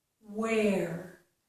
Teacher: my lips are rounded and pushed out for the W, for the letter W, but then I have to open for the air.